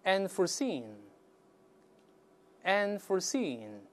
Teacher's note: 注意这个音节在▁seen▁这个音节是重读